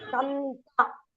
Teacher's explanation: Both the Anuswara have changed to Na. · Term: Nakaram